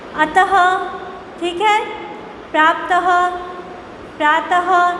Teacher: इन सब में आपको अंत में अह की ध्वनि सुनाई देगी।